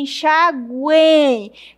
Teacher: Perceba que realmente o U é fraco, o E é forte e o I é fraco. Ó, encontro de uma semi, de uma vogal e de uma semivogal. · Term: tritongo